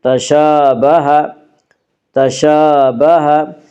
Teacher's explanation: کھڑا زبر کو ایک الف کے برابر کھینچ کر پڑھیں گے